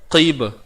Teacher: Qalqalah sughra, lantunan kecil. Kita layan saja, bunyinya santai.